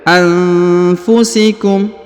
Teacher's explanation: Kemudian huruf nun sukun bertemu dengan fa, ya, harokat u dibaca fu, maka dia didengungkan dan juga disamarkan